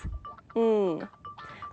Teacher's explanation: To make this sound, bring the back of your tongue up against the velum. Then close the air off completely and release it through the nose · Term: sound ng